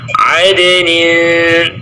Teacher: di situ ada qalqalah pada huruf dal, qalqalah sughra karena dia berada di tengah kalimat. Adnin ringankan suaranya d.